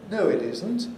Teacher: this is a divided fall plus rise because isn't is accented here it's new information so it must have its own term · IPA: əʊ | ɪ/tɪzn̩t ||